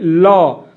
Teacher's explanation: जिसके उच्चारण में हवा जीभ के पार्श्व अर्थात बगल से निकल जाए, इसको पार्श्विक व्यंजन कहते हैं।